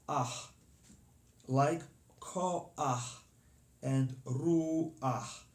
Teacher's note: you pronounce the vowel first, ah, and only then the consonant h